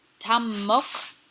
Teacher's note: very different things so Tom muff is two mono syllabic feet both syllables are stressed the first syllable however is closed so it will not be lengthened